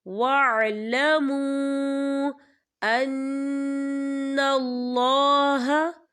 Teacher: واو ساکن سے پہلے پیش ہے، واو مدہ ہوگا اور اس پہ مد بھی ہے، تو ہم اسے 4 حرکت کے برابر کھینچ کے پڑھیں گے